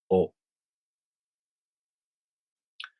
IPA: o